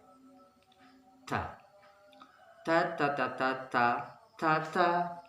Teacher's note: Biasanya pengucapan ini ujung lidah menempel pada gusi. Di atas gigi kita itu ada gusi depannya, kita tempelkan ujung lidah kita. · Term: huruf ta